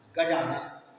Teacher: गज के आ तथा आनंद के आ के पास पास होने के कारण उनका उच्चारण मिलकर बड़ा आ हो जाता है